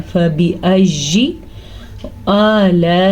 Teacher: या को लंबा नहीं करना लेकिन या की आवाज़ को क्लियर करना है।